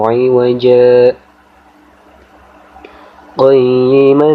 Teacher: Maka cara membacanya yaitu berhenti sejenak tanpa bernafas sepanjang 1 alif atau selama 2 harokat atau 2 ketukan pada lafaz iwaja sebelum melanjutkan bacaan berikutnya. Kita lihat di sini ada tanda saktah, ada tanda waqaf saktah di sini, antara iwaja pada akhir kalimat ayat pertama dan ghaima pada awal ayat kedua.